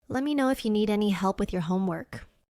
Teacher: Let me becomes let me. If you becomes if ya. These are very natural reductions in fast English. Also, homework is stressed more strongly, while the other words are lighter and faster.